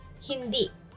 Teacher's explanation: Stress on the second syllable.